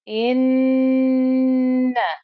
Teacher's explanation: I held on to that ghunna before I sounded out the fatha on top of the noon.